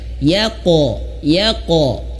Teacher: Pantulkannya itu harus benar-benar dipantul ke tebal ya. Yaqo dan jangan ditahan dulu. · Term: qalqalah